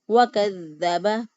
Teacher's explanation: وَكَذَّبَ واؤ پر ہونٹوں کو گول کرتے ہوئے، کاف کو باریک، دال کو نرمی سے لیکن مضبوطی اور قوت سے اس لیے پڑھا کیونکہ اس کے اوپر شد ہے